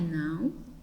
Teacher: nós vamos percebendo na primeira palavra um ditongo decrescente nasal